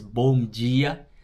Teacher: the D doesn't make a D sound. Sometimes it makes a J sound, so it's bom dia.